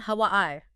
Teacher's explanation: Three syllables, stress on the second.